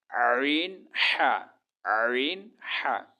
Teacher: হলকের মধ্যখান হইতে, মানে গলার মধ্যখান হইতে 2টি হরফ উচ্চারিত হয়।